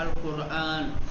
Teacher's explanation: را ساکن ہے اس سے پہلے قاف پر پیش ہے تو را کو تفخیم کے ساتھ